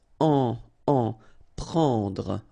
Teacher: It's what we call nasal, so it goes in your nose and it's en.